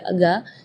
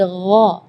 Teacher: Di ayat ini yang pertama di makhraj huruf ghain, ya, ghairil maghdubi, ya, perlu diperhatikan, bukan g, bukan huruf g, ya, bukan ga, tapi gha. Jadi kalau ga itu dia makhrajnya dari lidah, ya, tapi kalau huruf ghain itu dari bagian tenggorokan, ya. Jadi gha.